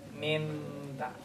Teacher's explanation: you have to transfer the noon into a meme · the sound ceases from the lips and transfers to your nose